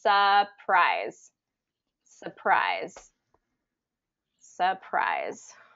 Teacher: there's an r in the spelling of surprise that we do not pronounce